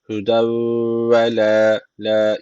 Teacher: burada da idgam meal gune var. Guneli bir şekilde bağlıyoruz.